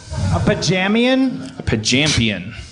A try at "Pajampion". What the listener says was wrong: A Pajampion. A Pajampion. A Pajampion. A Pajampion. Pajamian. You kept leaving the most explosive letter out. And also the most champion-defining letter.